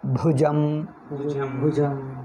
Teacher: ಭಾ ಕ್ಕೆ ಉಸಿರು ಹೆಚ್ಚು ಬರಬೇಕು ಜ ಸಾಮಾನ್ಯ ಇರಬೇಕು